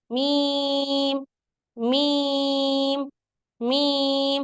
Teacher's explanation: मीम की आवाज में आवाज जो है वो नाक में नहीं जानी चाहिए जब डायरेक्टर मीम को आप अधा करेंगे तो आवाज आपकी नाक